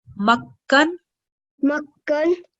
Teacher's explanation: we're going to press down on the kaf sound as well and make sure that we produce 2 kaf sounds, because shadda indicates that there are 2 of those letters over here.